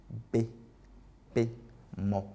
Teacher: Bilabiales parce qu'elles font intervenir en fait, les deux lèvres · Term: consonnes bilabiales